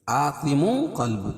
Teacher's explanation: تنوین کے بعد حروف اخفاء کے 15 حرفوں میں سے قاف ہے، تو یہاں ناک میں آواز کو چھپا کر پڑھیں گے